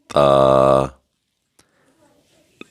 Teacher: یہ ہم باریک آواز میں پڑھیں گے. نوک زبان ثناولیہ کی جڑوں میں لگے گی تو تا ادا ہوگا